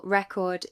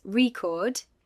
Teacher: The noun record has stress on the first syllable. The verb record has stress on the second.